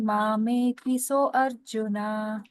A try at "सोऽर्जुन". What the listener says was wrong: हाँ, सोऽर्जुन। हाँ, अगर आप अ बोलती हैं, अ का उच्चारण करती हैं, तो एक आप अक्षर बढ़ा देती हैं, तो ये फिर अनुष्टुप नहीं रह जाता है।